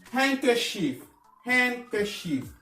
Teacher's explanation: On ne prononce pas le D.